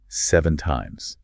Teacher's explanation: your voice physically goes up in pitch at the very end of the word. Yes, that is called a rising intonation.